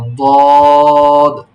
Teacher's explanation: জিহ্বার গোড়ার কিনারা উপরের মাড়ির দাঁতের গোড়ার সঙ্গে লাগিয়ে দদ উচ্চারিত হয়